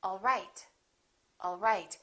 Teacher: My pitch goes down at the end for a statement